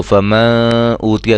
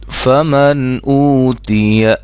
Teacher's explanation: غنہ نہیں کریں گے یہاں، فوراً فمن آواز ختم ہو گئی، فوراً اگلا حرف ادا کرنا